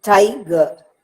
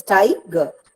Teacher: Tie receives the stress and ger is not pronounced with much force. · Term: trochee